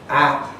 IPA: a